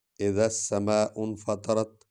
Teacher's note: انفطرت میں نون غنہ کرنا ہے، تا کو پر پڑھنا ہے، اور یہ تا جو ہے اس کو نرم اور ہلکا پڑھنا ہے۔